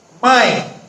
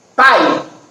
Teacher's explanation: Mãe, fica claro que o som sai pelo nariz. E pai, fica claro que sai pela boca. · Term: vogais nasais